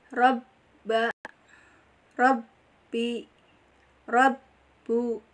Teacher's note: Makhrajul huruf ba di safatain atau di antara dua bibir, pertemuan dua bibir. Nah, ini rumahnya di bibir, ya, dua bibir.